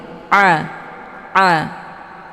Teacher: posisinya di tenggorokan bagian tengah jadi bacaan Ain ini lunak